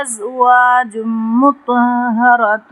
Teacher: تنوین کے بعد میم آ رہا ہے تو یہاں پہ ادغام کریں گے، ایک الف برابر غنہ کریں گے